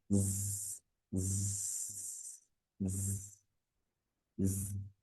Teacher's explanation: এরকম একটা ঝিঝি পোকার মতো আওয়াজ হবে।